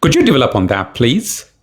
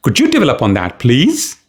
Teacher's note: oh could you develop on that please notice the voice quality I raise the pitch on please could you develop on that please as a request polite request